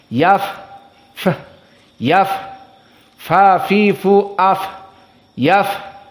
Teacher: di saat kita mensukunkannya ada suara nafas yaf F yaf Fa fi fu AF yaf jadi Jangan ditelan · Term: hams, sifat hams